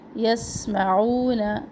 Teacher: یسمعون سین میں سختی اور سیٹی. عو و مدہ، نون کا زبر لمبا نہ کرے.